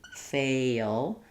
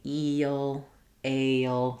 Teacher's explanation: if I'm moving from the E or the A, fail, that I'm going to have a y sound before my ul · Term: dark L